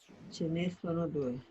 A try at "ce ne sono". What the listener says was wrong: Una cosa es chené, cuando es uno solo, y marcamos bien la E, chené. Aquí no tiene acento, entonces es chenesono. No es chené sono, no, es chenesono, no tiene acento, ese ne. Uno es chené y el otro es chenesono.